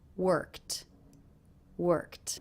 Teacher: Eadie ending here is pronounced as a tea sound that's because the sound before the K is unvoiced so this ending will also be unvoiced